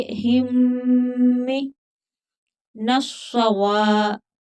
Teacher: صاد سختی کے ساتھ پڑھا جائے گا، نون کو صاد کے ساتھ ملا کر پڑھیں گے. سختی کے ساتھ پڑھا جائے گا کیونکہ مشدد ہے اور موٹا بھی پڑھا جائے گا.